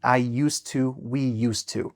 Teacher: it's much more comfortable for your mouth just to go and link straight to the t. · I'm kind of just erasing the d, it's silent, and I'm kind of connecting used to